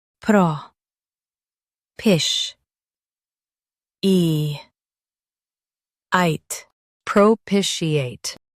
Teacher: Emphasize pish and soften eate.